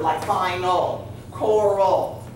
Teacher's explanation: second syllable sound, regardless of what vowel makes it, A, E, I, O, or U, is a short U sound, but it's called a schwa